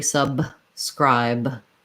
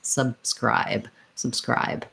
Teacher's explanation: That first B, I basically close my lips to make it, but then I release right into the S.